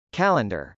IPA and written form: kˈæləndɚ (calendar)